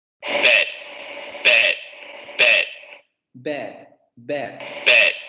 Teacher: La lengua sigue echada hacia adelante, no tenemos ninguna parte de la posterior echada hacia atrás. La lengua está echada hacia adelante. Apertura semiabierta, obviamente vibración de cuerdas vocales, y los labios distendidos. No hay redondeamiento de labios.